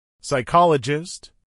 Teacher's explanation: a pronunciar en inglés por hablantes nativos psychologist tres sílabas psychologist acentuación en la segunda sílaba